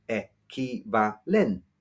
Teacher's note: stressed on the second e